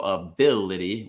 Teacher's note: schwas are never the stressed syllable in a word so ability with Bill being the stressed syllable